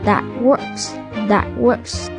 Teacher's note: T đứng trước W nên là T bị chặn.